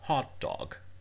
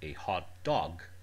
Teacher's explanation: in a compound, the compound has the stress in the first word, as in hot dog.